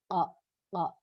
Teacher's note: Tekak ini qa ini keluarnya pas banget di depan tekak, sehingga ketika mengucapkan qa, nih warna hitam ini, ya, mengucapkan qa dalam tajwid, maka dia harus memiliki sifat qalqalah, tekaknya bergetar, qa, qa. Ya, ketika mengucapkan qa, tekak kita di dalam itu bergetar